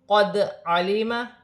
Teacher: وقف کی صورت میں دو زبر کی تنوین ایک الف مدہ میں بدل جائے گی، ایک زبر گر جائے گا اور ایک زبر ایک الف مدہ میں بدل جائے گا۔ دال ساکن ہے، حروف قلقلہ میں سے ہے، قلقلے کے ساتھ ادا کیا جائے گا